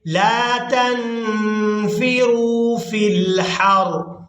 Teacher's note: वक़फ़ करते हुए रा के नीचे ज़ेर को अदा नहीं करेंगे